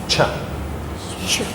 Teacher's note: it's a little puff of air, and after it you have a hiss. You have a hiss after it. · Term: affricate